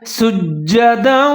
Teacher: سین کو آپ نے ظاہر کر کے پڑھنا ہے، جیم کے ساتھ ملا کے پڑھنا ہے، جیم مشدد ہے اور مضبوطی کے ساتھ پڑھنا ہے